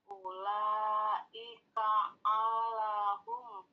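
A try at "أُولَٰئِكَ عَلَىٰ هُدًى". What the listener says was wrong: Bukan hum ini Bu. Ini hudam. Ulaika ala hudam.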